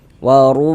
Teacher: Huruf ra memiliki harokat dhammah, maka huruf ra dibaca tabkhim, dibaca tebal, sehingga dengan menaikkan pangkal lidah kita ketika kita mengucapkannya